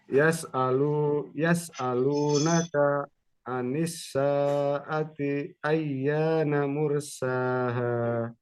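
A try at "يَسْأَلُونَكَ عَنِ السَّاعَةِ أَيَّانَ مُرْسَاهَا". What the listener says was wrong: Nah, itu bagus usahanya.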